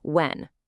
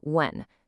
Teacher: In the UK, you'll often hear a little puff of air, a breathy h sound at the beginning. When kind of like hen.